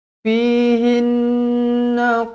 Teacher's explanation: Fihinna qashiratut tarfi lam yatamithunna insun qablahum wala jan. Fihinna nun yang bertanda sabdu wajibul gunnah dengung 2 harokat